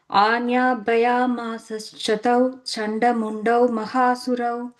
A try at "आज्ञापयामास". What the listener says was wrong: on the second line, first word, it's a nya sound. Agnya. You're saying anya, I'm hearing. It's agnya, is ig sound. It's an ig sound also.